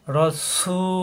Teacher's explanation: রাসূলুল্লাহ রয়ে তাসদিদ দুইবার, পরে রয়ে যাব র, রা হবে না। রসু জিব্বা নিচেতে চাপ দিয়ে একালিপ টান